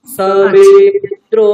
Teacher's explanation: সমে, এটা তো উদাত্ত কণ্ঠে বলছি, কিন্তু দ্র যখন বলছি তখন গলাটা আরো উঠিয়ে দিচ্ছি